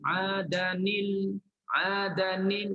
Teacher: Kita hafs kita tak baca idgham, kita izhar. Sebab tu nun tu keluar. Nun tu dihidupkan.